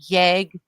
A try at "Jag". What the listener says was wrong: It does not pronounced yeg. It's pronounced yay.